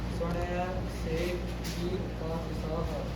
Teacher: ਗੁਰੂ ਗ੍ਰੰਥ ਸਾਹਿਬ ਦੇ ਅੰਦਰ ਆਪਾਂ ਕਿਸੇ ਵੀ ਸੱਸੇ ਨੂੰ ਸ਼ਸ਼ੇ ਦੀ ਬਿੰਦੀ ਨਹੀਂ ਉਚਾਰਨ ਕਰਦੇ